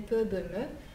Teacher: ce sont des bilabiales, donc les 3 sons ont la même image labiale